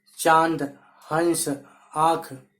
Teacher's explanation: इसका उच्चारण जो है करते समय मुंह और नाक दोनों से निकलती है। मतलब इसके उच्चारण में ध्वनि जो है हमारे मुंह और नाक दोनों से निकलती है। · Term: अनुनासिक